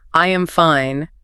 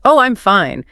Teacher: saying I am fine in a flat monotone voice versus oh, I'm fine with that typical American melodic lilt. The words are identical, but the meaning is completely completely different.